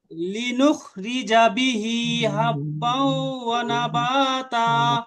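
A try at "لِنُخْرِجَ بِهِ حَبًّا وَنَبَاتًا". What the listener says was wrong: হ্যাঁ এই তো সুন্দর হয়েছে। হাটাকে আর একটু সুন্দর করার চেষ্টা করা লাগবে।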